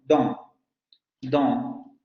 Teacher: primero aprender a dar el sonido oral, posterior abierto semilabializado, y luego nasalizarlo